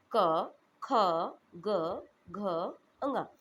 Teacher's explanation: ये आपका एक वर्ग है इसे हम बोलते हैं का वर्ग इनका उच्चारण स्थान है कंठ